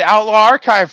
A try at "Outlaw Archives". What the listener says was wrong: It's Outlaw Archives. There's an S at the end.